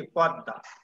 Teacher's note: দয়ের সাথে মহাফলা যুক্ত হয়েছে, তাই এই দটা দেখো দুইবার উচ্চারণ হয়েছে।